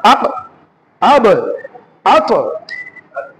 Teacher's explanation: হালকা লাফিয়ে ওঠার মত উচ্চারণ হবে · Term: কলকলা